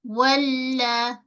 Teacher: Wal, makhraj lam. Tepi ujung lidah, gusi gigi atas. Walla. Jangan sekejap sangat.